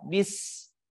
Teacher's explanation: huruf sin berada di tengah lidah. Bis. Posisinya huruf sin itu ujung lidah kita berada di halaman gigi seri bagian bawah, kemudian mengalirnya napas di antara dua gigi seri atas kita.